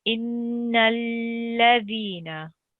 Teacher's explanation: So this here is not the name of Allah. It's just a normal lam mushaddid. So it's read with a thin sound.